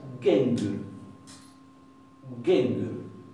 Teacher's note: suena casi como si fuera una K. Casi como si fuera una K. Suena muy oclusiva, más que la nuestra.